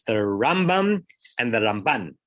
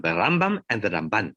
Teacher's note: the Ramban gets the stress on the second syllable, and the Rambam gets the stress on the first syllable